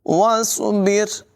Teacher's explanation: वाव को स्वाद के साथ मिलाकर पढ़ेंगे, अलिफ नहीं पढ़ा जाएगा। याद रखें, स्वाद हुरूफ मुस्तालिया में से है।